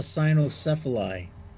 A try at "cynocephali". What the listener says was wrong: By the way, that would be kynocephaly. It's pronounced, the C is actually pronounced as a K. I didn't know what you meant because of that, but yeah, kynocephaly would be the dog-headed people as well.